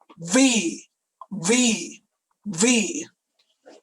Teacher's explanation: the only difference between f and v is that v is voiced